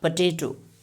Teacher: the vowel in the first syllable may disappear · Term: loss of a sound